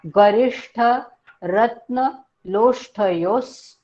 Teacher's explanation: योच्या पुढे विसर्ग आहे आणि पुढे स सशाचा आलाय उकार घेऊन सु, म्हणून त्या विसर्गाचा उच्चार आपण स मध्ये मिळवणार आहोत